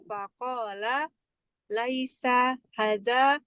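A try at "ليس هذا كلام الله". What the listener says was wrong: panjang Hadza.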